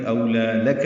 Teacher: لام پر کھڑا زبر ہے، باریک پڑھیں گے، دو حرکات لمبا کریں گے